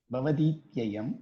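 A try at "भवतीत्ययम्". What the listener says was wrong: No, that's again wrong. It is Bhavatityayam. Sanskritam is very particular about its pronunciation. That akshara, that letter should be pronounced as it is. Takara means takara. You cannot make it as the dakara. And we have 4 takaras for other that ucharanam is very important.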